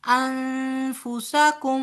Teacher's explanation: نون ساکن کے بعد فا آ رہا ہے لہٰذا یہاں پر اخفا ہوگا